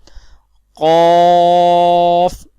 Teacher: زبان کی جڑ اور تالو کے نرم حصے سے ادا ہوتا ہے